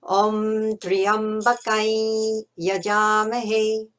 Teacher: a nasal I sound in order to join up with the yajamahe